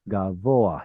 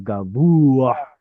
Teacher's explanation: So yeah, it's probably a passive participle, and we get the o instead of u because of the guttural